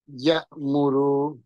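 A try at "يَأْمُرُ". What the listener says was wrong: টান হবে না স্যার, ইয়ামুরু।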